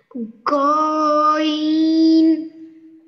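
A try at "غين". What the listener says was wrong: এইখানে টান হবে না। ই ওইখানে টান, হ্যাঁ, গতেও টান হবে না, গতে শুরু হবে আর নতে গিয়ে শেষ হবে, মাঝখানে ওইখানে টান, হ্যাঁ, গইন।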